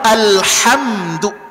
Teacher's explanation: makhraj dari huruf ha itu adalah wastul halqi letaknya di tengah tenggorokan